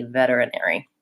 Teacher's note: If I'm going right to the R. If I'm saying veterinary, then I use the flap T